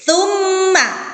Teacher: Di situ ada mim tasjid, maka dibaca gunnah. Tsumma dibaca double, mimnya menjadi 2.